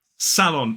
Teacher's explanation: 2 syllables, the stress is on the first